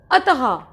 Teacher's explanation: विसर्ग का जो उच्चारण होता है ना वो ह की तरह होता है। मतलब जो ट्यूनिंग आती है, जो धुन आती है किसी शब्द के बाद, वो ह की आती है।